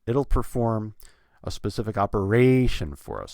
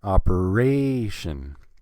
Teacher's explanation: Operation, 4 syllables, and I'm stressing the third syllable. Operation, that the third syllable is the one that gets the most stress in that word, and that's an important word.